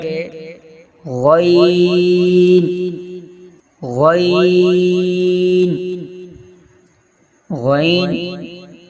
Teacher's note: حلق کے شروع حصہ سے ادا ہوتا ہے